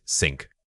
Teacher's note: When you say sink, your tongue is simply behind your top front teeth, making it an alveolar sound.